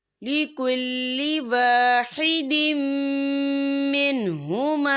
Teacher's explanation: واحدتاً فَلَهَا النِّصْفُ وَلِأَبَوَيْهِ لِكُلِّ وَاحِدٍ مِّنْهُمَا السُّدُسُ، یا دیکھیں لِكُلِّ وَاحِدٍ، دال کے نیچے تنوین ہے، تنوین کے بعد جو ہے میم آ رہا ہے، اور میم جو ہے حروف یرملون میں سے ہے، تو یہاں پر ادغام ہوگا، تو ہم اسے غنّے کے ساتھ پڑھیں گے۔